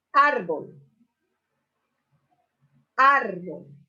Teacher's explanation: la mayor intensidad de voz está sobre la sílaba ar, siendo la tónica y la átona la sílaba bol. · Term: sílaba tónica